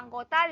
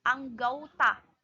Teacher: perubahan ini terjadi pada bunyi vokal tunggal o ke vokal rangkap au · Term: diftonisasi